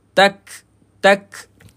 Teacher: Masa huruf kaf dan ta mati kita kena percikkan angin. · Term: hamas